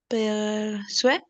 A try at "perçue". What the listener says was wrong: Perçu. La E final, como no tiene acento, perçu. La C cedilla que suena en S.